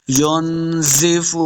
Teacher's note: فا پیش واو، فو واو مدہ، اس کو 2 حرکات لمبا کر کے پڑھیں گے